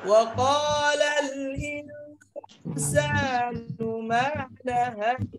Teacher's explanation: সাকিনের পরে ইখফা হরফ সিনের সাথে গুণনা হবে